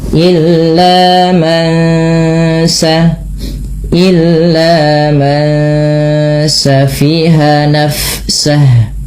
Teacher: Ketika bertemu sin, nunnya disamarkan kepada bunyi sin, terdengar bunyi ng, maka ini kita namakan dengan bacaan tajwidnya ikhfa hakiki.